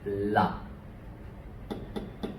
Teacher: Putting my tongue against my teeth to pronounce that.